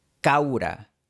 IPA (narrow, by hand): 'kaw.ɾa